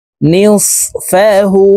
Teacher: এই হু এখানে ৩ আলিফ টেনে পড়তে হবে